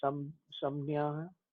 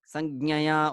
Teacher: that j kind of sinks down because it is not so comfortable to utter it together with nya